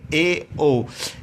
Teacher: इसी तरह ये पूछ लिया जाता है संवर्त स्वर कौन से हैं, तो ये 4 हो गए, ई, ऊ। इसी तरह अर्ध संवर्त जिसमें थोड़ा सा मुंह अधिक खुलता है